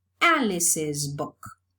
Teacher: While in John's is voiced, so the possessive morpheme is realized as a voiced sound too. And in Alice, s is a sibilant, so the possessive morpheme is realized as an extra syllable